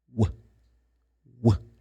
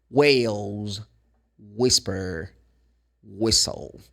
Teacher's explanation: It's formed by rounding the lips, slightly blowing air out as you saying the W sound.